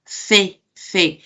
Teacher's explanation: la puntita de mi lengua está entre los dientes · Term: interdental